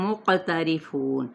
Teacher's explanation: اب یہاں پہ کیا ہے، ادغام شفوی، میم ساکن کے بعد میم متحرک، قاف پہ قلقلہ کریں، را زیر کی وجہ سے باریک، فو پہ واو مدہ، نون پہ وقف کیا تو وقف بالاسکان۔